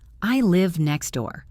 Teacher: The word door starts with a D. The T is trapped, so we just delete it.